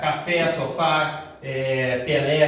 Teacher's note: essas palavras são oxítonas a sílaba tônica é a última